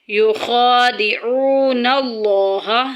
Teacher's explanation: لفظ اللہ کا لام یہاں پہ موٹا پڑا جائے گا، پر پڑا جائے گا کیونکہ اس سے پہلے زبر آ گئی ہے